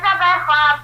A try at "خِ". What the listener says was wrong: نہیں خوا زیر نہیں بیٹا، غور سے دیکھو. خوا زیر خی ہے.